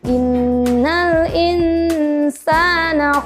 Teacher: ada huruf nun sukun bertemu huruf Sin yang harus dibaca dengung